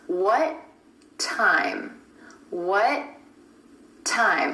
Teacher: Instead of releasing that final T at the end of what time becomes what time, what time. I'm holding that tongue up in the position for the final T and just releasing it into the beginning T at the next word.